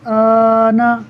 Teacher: اسے بھی ہم 6 حرکات 3 الف کے برابر کھینچ کر پڑھیں گے۔ آنا، میں نے تھوڑا کم کھینچا ہے، آپ نے اس کو 6 حرکات کے برابر کھینچنا ہے۔ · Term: مد لازم